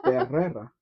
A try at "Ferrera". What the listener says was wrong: You're saying two hard R's.